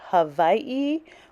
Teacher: Hawaii where the W is pronounced with the V